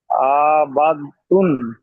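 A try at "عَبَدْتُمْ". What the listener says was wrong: টান দিচ্ছেন কেন, আবাদ তুম।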